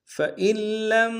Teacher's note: لہٰذا نون کو نہیں پڑھیں گے، لام سے ملائیں گے۔